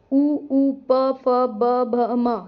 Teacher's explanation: जो हमारे होठ हैं वो मिल जाते हैं इन्हें ओष्ठ वर्ण कहते हैं